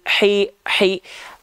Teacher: Hi. Ha kecil dilafalkan dari tengah tenggorokan berbisik.